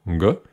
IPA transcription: g